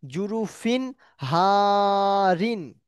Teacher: ইজহার পড়তে হবে বিনা গুন্না স্পষ্ট করে পড়তে হবে